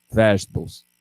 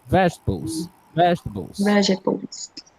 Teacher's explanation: Então, a tendência, né, é que o falante de português tem tipo essa sílaba tônica lá para o final, mas não, tá? É a primeira sílaba. Vegetables, repeat with me.